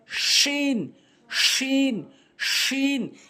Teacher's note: জিহ্বার মাঝখানে উপরে তালুর সঙ্গে জিমের মতো করে